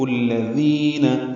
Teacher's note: یحب حا وسط حلق سے ادا کریں گے، یا اور با پر دونوں پر پیشے معروف طریقے سے پڑھیں گے. با کو الذین کے لام سے ملا دیں گے تو یحب الذین، دال نرمی سے ادا ہوگا، دی یا مدہ ہے، دو حرکات لمبا کریں گے.